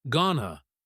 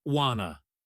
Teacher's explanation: the phrase going to very frequently collapses into gonna or want to becomes wanna. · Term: connected speech